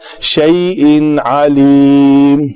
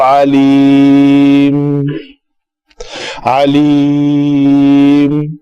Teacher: تنوین کے بعد حروف حلقی میں سے آ گیا ہے, یہ حروف حلقی میں سے کلمہ ہے, تو اس کو یہاں پہ اس کا اظہار ہوگا تنوین کا